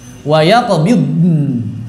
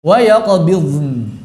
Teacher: Jangan mantul dong, kan bukan qalqalah. Maka sebetulnya membaca wayaqbidn yang paling gampang itu jadi mirip dha. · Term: rikhwah